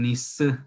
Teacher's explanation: las mujeres dicen ni s, ¿verdad? con la i central